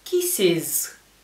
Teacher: la e se va a pronunciar como una I latina